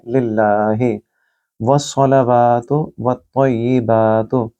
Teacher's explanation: सौद को आपने गोल पढ़ना है, सीन की आवाज़ नहीं निकालनी। वस्सलावातु, वाव को लंबा करेंगे, खड़ी ज़बर है।